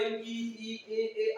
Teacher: ऐसा वर्ण जो जीभ के अग्र भाग से निकलता है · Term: अग्र स्वर